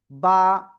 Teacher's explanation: দুই ঠোটের ভিজা অংশ থেকে এই অক্ষরটা উচ্চারিত হবে